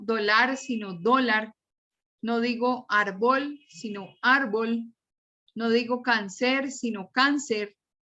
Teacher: la sílaba tónica va en la penúltima sílaba